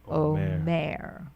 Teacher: The accent is on the last syllable.